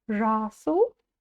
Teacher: буква «ы», она короткая, и ударение будет стоять на букве «а»